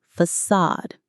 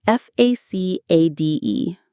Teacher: The stress is on the second part, sod.